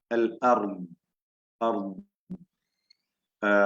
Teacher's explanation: അൽ അർദ്, അർദ് എന്ന് പറയുമ്പോ ദ്വാദ് സുക്കൂൻ നൽകി വഖഫ് ചെയ്യുമ്പോഴുണ്ടാകുന്ന ആ ശബ്ദത്തിന്റെ ദൈർഘ്യം, നാവിന്റെ അരുവിൽ നിന്ന് പൂർണ്ണമായി ദീർഘത്തോടു കൂടിയുള്ള ആ ശബ്ദം, അർദ് എന്ന് കൽക്കല വരില്ല. കൽക്കലത്തുള്ള അക്ഷരമല്ല, റിഖ്വായ അക്ഷരമാണ്. അയവോടുകൂടി ഉച്ചരിക്കുന്ന, ലോലമായി അല്ലെങ്കിൽ ലൂസാക്കി ഉച്ചരിക്കുന്ന, അയവോടുകൂടി ഉച്ചരിക്കുന്ന അക്ഷരമാണ്. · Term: റിഖ്വായ ദ്വാദിനെയാണ്